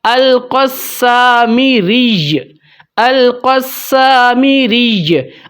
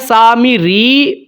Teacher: جب بھی یا کے اوپر تشدید ہوگی اور اس کے اوپر وقف ہو رہا ہوگا تو آپ نے تشدید کو پڑھنا ہے، لیکن جو حرکت ہے وہ آپ نے ختم کرنی ہوتی ہے